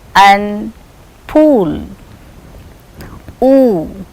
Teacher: back part of the tongue is raising and coming close to the soft palate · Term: back close rounded vowel